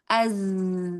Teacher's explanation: ada tambahan suara yang keluar dari kedua bibir karena aliran suaranya menyempit sehingga dia biasanya menyerupai suara ee kalau huruf ada yang menyerupai suara burung ya, ada yang menyerupai suara lebah, ada yang menyuari apa ini ya menyesuaikan seperti suara desisan ular gitu ya menyerupai. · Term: Sofir